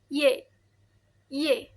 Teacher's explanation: Huruf Y bagian tengah lidah. Bagian tengah lidah itu mendekati langit-langit keras.